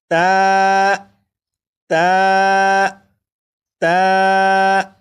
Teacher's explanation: تا کو بھی ایک الف کے برابر کھینچ کر پڑھیں گے، جیسے تا، تا، تا۔